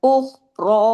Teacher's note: ख को जमाओ के साथ पढ़ना है। हिलाना नहीं है। ख को हैवी भी पढ़ना है।